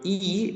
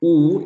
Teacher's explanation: so ie is a front vowel sound ooh is a back vowel sound